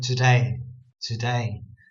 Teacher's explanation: one word today the emphasis is on day because the two part isn't so important